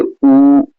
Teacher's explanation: ऐसे स्वर हैं जिनके उच्चारण में ओठों का आकार गोल हो जाता है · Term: वृत्ताकार स्वर